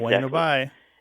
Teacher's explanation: it's bueno bye with the B barely pronounced, right? Pronounced like a W?